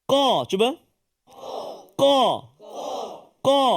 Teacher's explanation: terletak di Pangkal lidah belakang ya belakang ni Tengah ni hujung ni Tengah ni pangkal lidah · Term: huruf qaf